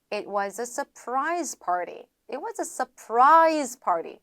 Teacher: R 다음에 T라든가 D 사운드가 들어가게 되면은 역시나 이 친구 리을 소리로 바꿔준다라고 보시면 되죠.